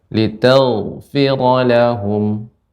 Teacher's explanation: Di sini ghain ketika sukun dia isti'la ya.